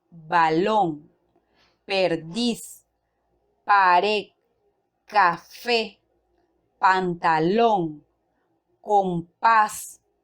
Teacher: La mayor fuerza de voz en estas palabras se encuentra en la última sílaba. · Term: agudas